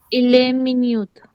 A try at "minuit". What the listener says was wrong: मिन्यूट तो मिनट हो गया. नहीं, मिनुई. मिन नुई, टी को बोलेंगे नहीं, मिन नुई।